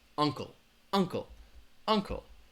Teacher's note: has two syllables the stress is gonna be on that first syllable